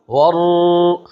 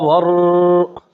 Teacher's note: را کو موٹا پڑھنا ہے کیونکہ را مشددہ مفتوحہ، را مشدد بھی ہے اور اس پر زبر بھی ہے.